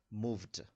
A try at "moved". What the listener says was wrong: Moved. Most. You speak it in Spanish. Most.